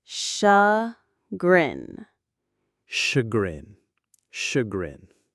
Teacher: The stress is on the second syllable, grin.